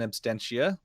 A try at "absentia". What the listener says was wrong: Yeah, there's no T.